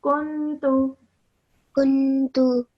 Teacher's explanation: don't spend too long on the noon sound.